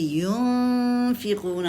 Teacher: یا کے پر پیش ہے، پیش کے لیے ہونٹ گول کریں گے لازمی. جہاں جہاں پیش ہوتی ہے ہونٹ گول کریں گے.